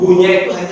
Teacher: Kemudian kesalahan yang keempat, memanjangkan hu pada lafzul jalalah Allah. Qul huwallahu, hu-nya itu hanya satu harokat. Tapi sering kelirunya qul huwallahu ahad.